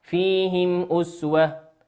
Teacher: الميم ساكنة في كلمة فيهم أتى بعد حرف الهمزة، والهمزة من حروف الإظهار